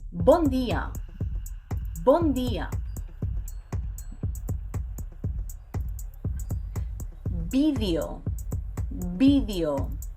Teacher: Number 1, B and V sound exactly the same. So whether you see a B or a V, you pronounce both with the same B sound.